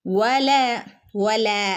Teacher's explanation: ലാമിന്റെ കൂടെ ഒരു അലിഫ് അലിഫ് മദ് വന്നിട്ടുണ്ട് അല്ലെ രണ്ടനക്കം നീട്ടി കൊടുക്കുക